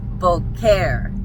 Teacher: And so it's not boer, it's boare. The stress is on the second syllable. And a female, a cowgirl is a boer.